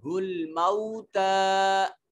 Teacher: الموتى میں دیکھیں واو ساکن ما قبل مفتوح واو لین، اس کو نرمی سے ادا کریں گے۔ موتا میں کھڑی زبر ہے اور اس کے بعد یا آ گئی جو لکھنے میں آیا ہے لیکن پڑھنے میں نہیں آیا یہ حرف، تو یہ الف المدیہ الصغیرہ نہیں، یہ الف المقصورہ ہوگا۔